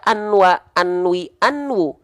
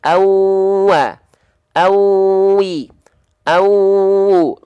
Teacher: Idgham biguna memasukkan annya ke bunyi waw menjadi awwa, awi, awu.